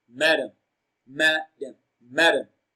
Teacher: madam ma is pronounced louder and longer